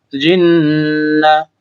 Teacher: নুনের উপর তাসদীদ গুণনা করা ওয়াজিব